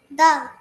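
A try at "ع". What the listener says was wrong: না, দাল কখনো তার বাম পাশের হরফকে ধরে না। হুম, দাল কখনো তার বাম পাশের হরফকে ধরে না। মিম, এটা হলো আইন।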